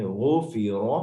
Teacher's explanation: گلے کے سب سے اوپر والے حصے، ہمارا جو تالو ہے وہاں سے غائن ہوتا ہے. جیسے ہم غرارے کرتے ہیں غائن، سو غاضب، غاضب، غائن موٹا ہے، ٹھیک ہے، یہ بھی حلق سے نکلے گا.